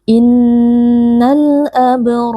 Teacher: sukun Innal Abror AB di sini ada Qalqalah Sugra karena ada huruf ba sukun yang merupakan huruf Qalqalah posisinya ada di tengah-tengah kata atau kalimat kita baca dengan suara yang memantul · dua huruf ra. Nah, dua-duanya berharokat fathah, maka dua-duanya kita baca dengan tebal.